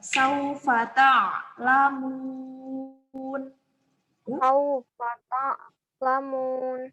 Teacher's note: Jadi dia yang satu A itu dia bunyi tenggorokan. Kalau la dia bunyi dari lidah depan. Jadi la-nya jangan sengau ya.